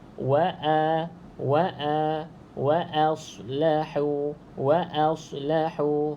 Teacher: okey tak boleh baca waos Sebab Dia a bukan o a Oke bukan o Oke O ni salah jadi bacanya wa